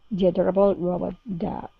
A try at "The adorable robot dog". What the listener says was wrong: Okay, very nice.